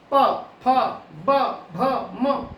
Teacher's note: ये आपकी कहलाती है ओष्ठ्य ध्वनियां, क्योंकि जब इसका उच्चारण होगा तब जीभ का कोई काम नहीं है, ये और ये आपस में मिलेंगे, प फ ब भ म।